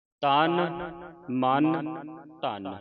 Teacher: ਹੁਣ ਇਹ ਤਨ ਮਨ ਧਨ ਤਿੰਨੇ ਸ਼ਬਦ ਜਿਹੜੇ ਪੋਲੇ ਪੜ੍ਨੇ ਨੇ। ਮਤਲਬ ਟਿੱਪੀ ਲਾ ਕੇ ਉਚਾਰਨ ਨਹੀਂ ਕਰਨੀ। ਤਨ ਮਨ ਧਨ ਇੱਥੇ ਧਦੇ ਦੀ ਆਵਾਜ਼ ਉਚਾਰਨ ਹੋਵੇ ਧਨ ਸਭ